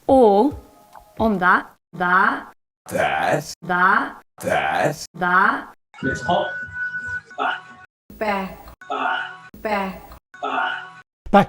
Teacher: The shifted TRAP vowel is lowered and backed from [æ] to [a].